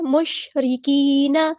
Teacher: را ہمارا یہاں پہ باریک لائٹ لیٹر ہے، کاف بھی باریک لائٹ لیٹر ہے